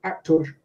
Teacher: In many students' accents, they prefer to keep the full value of the O. So they say things like actor.